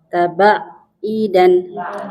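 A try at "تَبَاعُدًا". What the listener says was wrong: Ainnya u.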